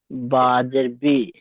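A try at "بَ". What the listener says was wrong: এটা বলছেন না, এখানে শুরুটা একদম দেখেন, শুরুতে এটা জের নয়, কারণ জের অক্ষরের নিচে হয়, আর এটা অক্ষরের উপরে আছে হারাকাত। উপরে হলে জের হয় না, অক্ষরের উপরে হলে জের হয় না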